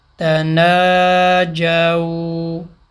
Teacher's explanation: واولین پہ جب وقف کریں گے اس کی نارمل مقدار جو اس کی 1 سیکنڈ ہے وہی کھینچیں گے. دوسرا یہ ہے کہ واولین یہاں پہ اینڈ میں آ رہا ہے تو ساتھ الف بھی لکھا ہوا ہے.